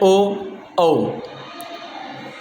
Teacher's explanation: कंठ औष्ठम, अर्थात बोलते समय कंठ और ओष्ठम यानी होठ, इनका भी प्रयोग होता है, इसलिए इनको बोलते हैं कंठोष्ठ।